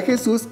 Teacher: tenemos dos sílabas donde se encuentra la mayor fuerza de voz en la última sílaba